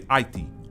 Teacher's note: some take that second vowel sound out, and some say Aiti